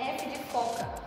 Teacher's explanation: construção gerando uma fricção um exemplo é o f de foca o ar passa entre os dentes e os lábios